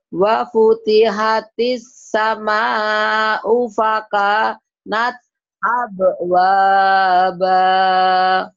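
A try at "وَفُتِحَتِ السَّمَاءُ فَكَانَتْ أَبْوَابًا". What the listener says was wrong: Jangan putus. Napasnya nggak kuat. Jangan pakanat nyambung ya, Bu, ya.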